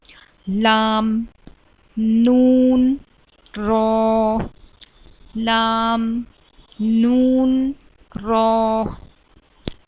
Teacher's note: तो जबान की नोक ऊपर के तालू को ऊपर दांतों से पहले टच होता है